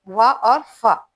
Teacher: दंतोष्ट से नीचे ओठ और ऊपर के दांतों से